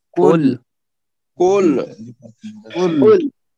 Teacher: قل جو ہے یہاں پہ صاف اور موٹا ہے، یہ قل جو ہے یہ خل نہیں ہے، ٹھیک ہے، یہ خل نہیں ہے، نہ کل ہے۔